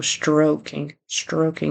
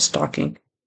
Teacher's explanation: he needs to get that R there and a long o